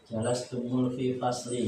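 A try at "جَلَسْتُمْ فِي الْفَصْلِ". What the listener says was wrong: Tidak perlu jelas temu kan tidak bertemu huruf sukun. Sukunkan saja. Jadi dia berlaku ketika bertemunya dua huruf sukun. Nah, kalau tidak bertemu sukun, tidak perlu jalas tumu. Memang dia sukun. Nah, ya ini dimaksudkan tadi ketika bertemu dua huruf sukun.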